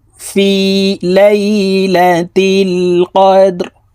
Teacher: লাইলা তা লাম জের তিল লাইলা তিল কফ দাল জবর কদে দাল কলকলার হরফ নিচের দিকে ধাবিত করে ধাক্কা দিয়ে উচ্চারণ করব